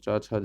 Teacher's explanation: चा छा जा जो है आपकी वो तालव्य ध्वनियाँ हैं